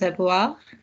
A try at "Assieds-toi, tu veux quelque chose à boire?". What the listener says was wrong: Good, but don't make it an effort. Make it like normal. Assieds-toi, tu veux quelque chose à boire? And notice your consonants are getting smaller and smaller and your vowels are getting bigger and bigger.